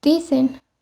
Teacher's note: el fonema dentoalveolar fricativo sonoro, que representa el sonido ts con una vibración de las cuerdas vocales